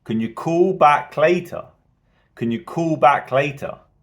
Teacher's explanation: typically the sentence as a whole would be rising